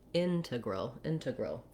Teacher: integral has first syllable stress and the letter e is a schwa and the letter a is also a schwa so that those both sound like a and they're very short